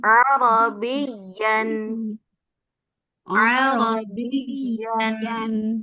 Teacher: jadi ada tasydidnya jangan dipanjangkan